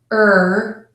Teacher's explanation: the back of your bottom front teeth for the r ER the back of your tongue will pull up and that will make the r sound